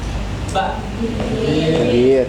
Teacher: Dua bibir tertutup ya. Bukan terbuka.